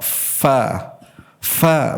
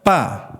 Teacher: ujung gigi seri atas bertemu dengan bibir bagian bawah. Fa fa bukan pa. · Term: huruf fa